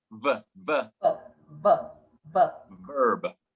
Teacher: The only way we can say a V is when we put our teeth over our bottom lip.